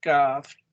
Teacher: Porque no tiene vibración, entonces tiene que pronunciarse como T, porque tampoco tiene vibración la T. O sea, las dos son iguales. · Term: no vibration